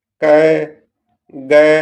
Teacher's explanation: अल्प प्राण जिनके उच्चारण में मुख से कम हवा निकलती है।